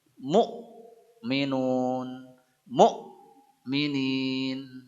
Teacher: dan hamzah sukun bacaannya menghentak